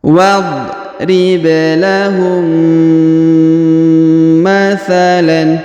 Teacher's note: huruf mim sukun bertemu dengan mim bertasdid, maka dia ditahan dan ditekan. Huruf mimnya ini tidak dibaca lagi karena sudah melebur ke sini ya.